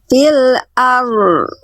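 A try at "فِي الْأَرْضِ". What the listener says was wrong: Nah, itu kan bunyinya berhenti di ro. Di ro lagi ya. Fil ar. Nah, ini nya belum ada. Fil ar. Kalau kita penggal tuh gitu. Ar. Tinggal sambung. Ar.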